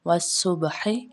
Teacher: ہا حلق کے درمیان سے ادا ہوگی